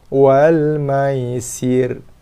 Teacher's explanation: So ra ketika wasal dan juga ketika waqaf dibaca dengan sifat tarkik nipis, tak berubah. So kalau sambung, wal maisiri, ri nipis, bukannya ri, wal maisiri kul, ketika wasal.